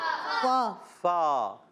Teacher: فا کا مخرج ہے اوپر والے دانتوں کے کنارے، جب نیچے والے ہونٹ کے تر حصے سے لگتے ہیں تو ادا ہوتا ہے فا